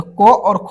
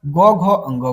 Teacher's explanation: तो क और ख को अघोष कहेंगे। ग, घ को घोष कहेंगे।